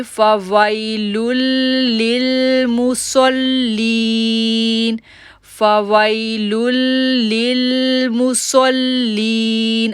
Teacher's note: اب وائی پڑھیں گے یہاں پہ، وی نہیں پڑھیں گے، یہ وی نہیں ہے، لین لیٹر ہے، جیسے ہم نے کل صورت میں پڑھا تھا آئی، بائی اور شائی ایسے ورڈ ہیں، تو اسی طرح یہ ہے وائی.